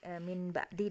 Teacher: dengungnya Min ba'di disitu Min ba'di kita dengungkan Meme ya karena hukum iqlab kan jadi m disitu